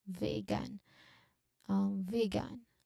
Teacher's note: the very long e sound here in the first syllable